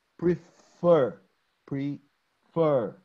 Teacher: Like prefer, prefer. You see, the stress is in the fur.